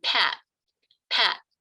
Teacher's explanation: I'm not releasing the /t/. There's no flick of the tongue there.